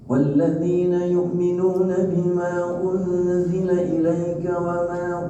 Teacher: U-nya monyongnya, N-nya tipis.